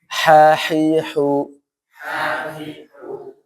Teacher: yang wasatul halq ya, yang tenggorokan bagian tengah